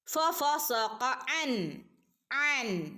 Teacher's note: നൂനിന്റെ മുകളിൽ സുക്കൂൻ വന്നിട്ടുണ്ട് വ്യക്തമായിട്ട് അൻ എന്ന് ഓതി കൊടുക്കുക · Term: ഇളഹാർ